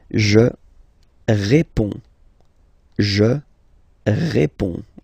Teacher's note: so you can see that D and S here are not pronounced